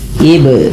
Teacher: Ba di sini dibaca dengan bacaan qalqalah yaitu artinya memantul. Apa yang dipantulkan adalah bunyi suara huruf bnya yaitu ib.